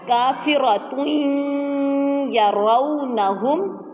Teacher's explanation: تنوین کے بعد یا مشدد آ جائے تو وہاں پر غنہ، ادغام تو ہوگا لیکن غنّے کے ساتھ ہوگا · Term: ادغام مع الغنہ